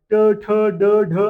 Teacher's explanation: ट ठ ड ढ न हे सर्व मूर्धन्य आहेत. कारण जिभेवर लोड येते बघ.